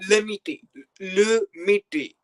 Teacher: It's Miti with the retroflexive ta, ta sound.